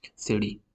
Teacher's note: Instead of saying city, city. Most of many American English speakers will say this alveolar flap. They will add this city.